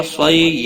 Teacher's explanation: صیحتا صاد حروف مستعلیہ میں سے ہے، پر پڑھا جائے گا۔ صی یالین ہے، تھوڑا نرمی کے ساتھ کھینچ کر ادا کریں گے